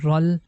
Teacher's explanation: So this is impossible to pronounce, because if we are going to connect ra sound with noon, it becomes run, and there is nothing that we can connect with letter lam, and it's impossible to pronounce. And if we are going to connect the ra sound directly with lam, like rul, it means we are not pronouncing letter noon